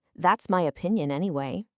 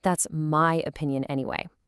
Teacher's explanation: By stressing the word my, we're doing something called contrastive stress. We're not just giving an opinion anymore.